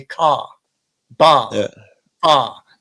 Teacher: It's a dropping of the R at the end of a word. It's not a conversion. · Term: rhoticity